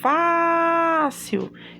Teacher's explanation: quando falo fácil, eu sei que Fá é a sílaba tônica e eu classifico logo ela, paroxítona, é a penúltima sílaba que é mais forte.